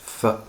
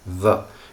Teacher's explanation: The voiceless dental fricative th and the voiced dental fricative the create lots and lots of problems for lots and lots of different people because they are very uncommon sounds that most languages do not have. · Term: dental fricatives